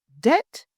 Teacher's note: The word debt, pronounced as debt, not debt, so we don't hear the B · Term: silent letter B